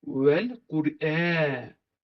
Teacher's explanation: Demək, ikinci ayəmiz Vəl-Qur'anil Həkim. Burada vav hərfi dodaq hərfidir.